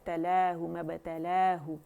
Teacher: تو مبتلا میں با میں قلقلہ باریک ہوگا